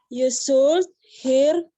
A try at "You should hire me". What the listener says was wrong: L-nya nggak dibaca. L-nya nggak dibaca. You should. You should.